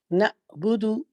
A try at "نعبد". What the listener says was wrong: نہیں آپ مجھے ایسا فیل ہو رہا ہے کہ آپ جھٹکا دے رہے ہیں۔ جی نعبد، چلے آئین